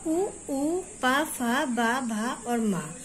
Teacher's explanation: इनका उच्चारण स्थान है ओष्ठ और इनका वर्ग का नाम है ओष्ठ